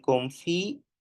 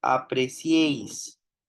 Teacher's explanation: En determinadas palabras, al menos en España y varios países americanos, pueden pronunciarse en dos sílabas, como ocurre en confiéis, frente al triptongo de apreciéis